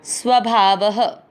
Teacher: आधे स के साथ व पूरा। स्वभाव, व में अ की मात्रा तो विसर्ग को पढ़ेंगे ह